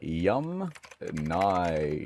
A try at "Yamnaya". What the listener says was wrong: Okay, so the Yamnaya people, not Yum-nya.